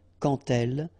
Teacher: when you will have this d, you will phonetically pronounce it like t